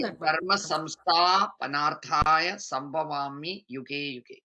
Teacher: Yeah, samstha, you could just extend it a little more dirgha.